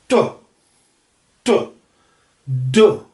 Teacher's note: तो ट और ड जो है वो भी प्लोसिव हैं, लेकिन उनमें होठ मिलते नहीं हैं, तो वो बाइलेबियल नहीं होंगे।